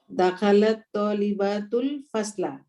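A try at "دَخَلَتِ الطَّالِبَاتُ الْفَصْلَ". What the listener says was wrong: হ্যাঁ, দাখালাত, যে মুহান্নাস, দাখালাত। উচ্চারণ করার সময় দাখালাতের তাও তানিসির নিচে জের দিতে হবে। দাখালাতিক তালিবাত, এরকম করে মিলিয়ে পড়তে হবে।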